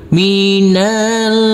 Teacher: untuk huruf nunnya harus kita baca dengan samar-samar dan huruf nunnya kita dengungkan dan huruf RO di sini boleh dibaca panjang dengan 2 EMP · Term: ikhfa